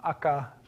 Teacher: So uh protoolynesian ata dawn has become aka uh in Hawaiian t has become k